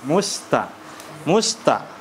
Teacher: huruf ta adalah huruf istifal dan jangan dia malah menjadi tebal